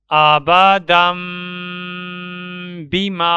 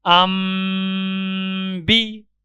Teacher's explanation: اب اس باکس کے اندر دال کے اوپر دو زبر کی تنوین موجود ہے، اس کے ساتھ چھوٹا میم بھی ہے اور اس کے بعد حرف با بھی ہے۔ تو تنوین کے پڑھنے میں جو نون آتا ہے اس نون کی جگہ اس چھوٹے میم کو پڑھیں گے، یعنی تنوین کو با کے ساتھ ملا کر پڑھیں گے۔